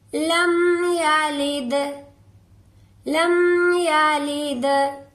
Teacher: लम यलिद लम यलिद दाल पर कलकला होगा।